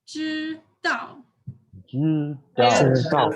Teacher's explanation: So first tone, fourth tone.